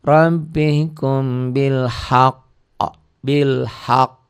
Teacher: Cara menghentikannya ditekan suaranya, ditahan 2 harokat, diikuti qalqalah.